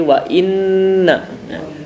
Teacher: nun bertasydid atau mim bertasydid ya, hukumnya adalah gunnah. Kemudian cara membacanya ditahan, jadi nunnya itu ditahan. Wa inna nah, tidak boleh wa innahu, nah, tapi wa inna nah, ditahan.